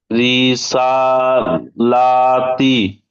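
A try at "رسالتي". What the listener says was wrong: রি টান দেবেন না, রিটা হচ্ছে হারাকাত। রিসালাতি। আচ্ছা, সিন খাড়া। মাশাল্লাহ, সিন খাড়া যাবার সা, এটা কি ইজরা করেন?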